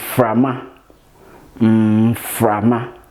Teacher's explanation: It's produced with the upper teeth and the lower lip, as in frama, frama. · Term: labiodental sound